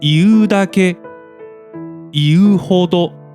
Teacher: For example, iu is a nucleus-less verb that ends on a high pitch. So, both moras of these two dependent words are pronounced high